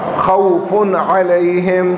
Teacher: فا پر نون تنوین ہے, اس کے بعد عین آ گیا ہے, کیا ہوگا؟ اظہار ہوگا